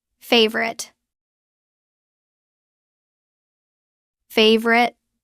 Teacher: drop the middle o it becomes favorite two syllables